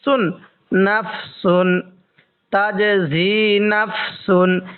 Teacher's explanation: এই তানবিনের মধ্যে আমরা কিন্তু স্পষ্ট করে পড়বো গুন্না করবো না